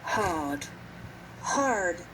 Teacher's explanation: the r is pronounced stronger in American English